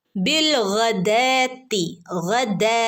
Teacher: അപ്പം റബ്ബഹും ബിൽ, okay, ബിൽ ഗദാത്തി, ഗൈനാണ് ഉയർത്തി പറയേണ്ട ഒരു ലെറ്ററാണ് ഗൈനൊക്കെ. ഓക്കെ, അപ്പോൾ തൊണ്ടയുടെ മുകൾ ഭാഗത്ത് നിന്ന് വരുന്ന അക്ഷരമാണ് ഗ